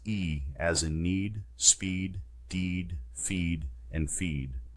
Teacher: To make this sound eee distinctly, I must slightly drop the lower jaw. Arch the tongue to a position high and forward in the mouth with the sides of the tongue touching the teeth. Move the lips into a grinning or retracted position in an oval shape. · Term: extreme vowels